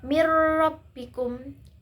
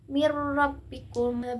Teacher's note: memasukkan suara nun sukun atau tanwin sepenuhnya kepada huruf lam dan ra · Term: Idgham bilaghunah